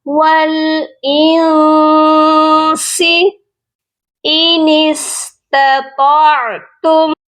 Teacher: اخفا کہتے ہیں آواز کو ناک میں چھپا کر پڑھنا۔ یہاں ہم اپنی آواز کو ناک میں چھپائیں گے